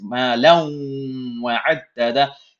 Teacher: I am holding the noon sound in my nose, or the tanween sound in this case, ma lawn wa'addada, in my nose a little bit with idgham, and this is called idgham bighunna, or merging with nasalization.